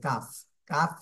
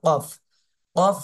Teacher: এজন্য এখানে কাফ বলবো না আমরা কফ গলার মাঝখান থেকে উচ্চারণ করব